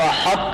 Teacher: ہا کے بعد پہلی موٹی آواز محسوس ہو، پھر تا کی باریک آواز ہو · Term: ادغام ناقص